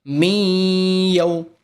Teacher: میم یا زیر می، اس میں نون ساکن کو نہیں پڑھیں گے، میم کو یا سے ملائیں گے